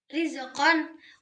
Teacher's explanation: huruf ro ini dibaca tipis karena berharokat kasroh. Tarkik ini membuat bacaan terdengar lembut dan sesuai dengan aturan tajwidnya.